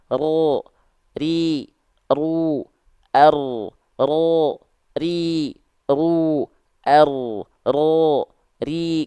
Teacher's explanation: enggak boleh banyak-banyak karena huruf ro punya sifat namanya adalah takrir takrir itu apa bergetar bergetar lidah kita tapi bukan bergetar yang berlebihan · huruf ro itu getarannya hanya sedikit mungkin hanya satu sampai dua getaran saja